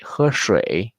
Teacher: The end of the tone 1 is the beginning of tone 3.